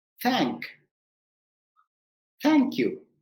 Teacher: from your throat the th voice comes from your throat and voiceless th there is no voice there is no sound from your throat · if you put your two fingers in your throat there should not be any vibrations